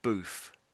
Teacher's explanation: So you're making the TH sound like an F.